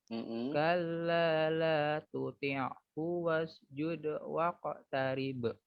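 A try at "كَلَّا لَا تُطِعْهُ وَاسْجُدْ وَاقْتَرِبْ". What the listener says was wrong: Hu, keluarkan. Hu. Ha, ada dorongan napas. Hu. Kalla la tuti'hu wasjud. Hati-hati lagi ya. Fokus pada huruf H. Haknya dikeluarkan dengan baik dan benar.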